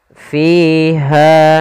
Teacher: adanya kasrah bertemu dengan Ya kita panjangkan dua harakat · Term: Mad thii